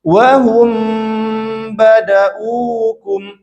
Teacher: Tutup sempurna bibirnya, kemudian ditahan sampai tempo ketiga, ditahan, didengungkan. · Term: ikhfa syafawi